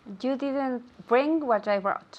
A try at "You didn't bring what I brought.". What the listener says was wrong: Perfect. You didn't bring what I brought. This O-U-G-H is silent.